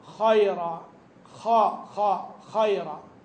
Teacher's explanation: مخرج الخاء من ادنى الحلق لكن في نفس الوقت تصاحبه كيفيه في نطقه تميزه مثلا فيرتفع اقصى اللسان عند النطق به